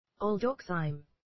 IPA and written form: ælˈdɒksiːm (aldoxime)